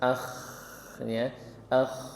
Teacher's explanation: huruf k dia punya sifat Hamas akh ya akh jadi ada nafasnya di situ